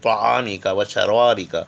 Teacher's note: زبان کی نوک اور اوپر کے دانتوں کی جڑ سے توئے پڑھی جائیں گے